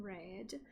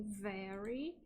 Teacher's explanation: Bem, quanto ao rótico no inglês, vamos apontar aqui duas variedades principais, tá? Que é aquela variedade rótica do General American, que o R, o rótico é retroflexo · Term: R retroflexo